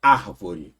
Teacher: Basta você falar a palavra, você fala árvore, demora mais no ar. Então ela já é proporoxito, né?